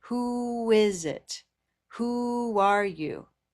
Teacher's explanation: the connection between the two words is a W consonant